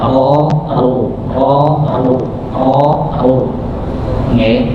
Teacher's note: Ketika huruf ro ini dalam keadaan sendirian, ketika fathah atau dhammah maka dibaca tebal ro. Yang penting dia tidak terlalu banyak getaran dan tidak ada tidak ada getaran. · Yang penting dia tidak terlalu banyak getaran dan tidak ada tidak ada getaran. Jadi di tengah-tengah getaran sedikit, ada getaran tapi sedikit.